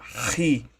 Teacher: Parece com X, tem um som do CH alemão que equivale ao J em espanhol. É aquele som do R aspirado, aquele R bem arranhado mesmo na garganta. Ri. Alguns autores insistem em falar Ki ou Xi, mas a pronúncia correta dessa letra é Ri, aquele R aspirado pegando bem na garganta.